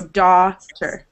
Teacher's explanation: it's with the ah sound. And your mouth stays open for the whole sound.